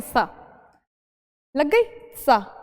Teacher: जब हम सिंपल सपेरा वाला सा बोलेंगे तो हम क्या करेंगे, हमारी जीभ दांत से लगाएंगे, सा लग गई सा, अब बोल दिया हमने सा।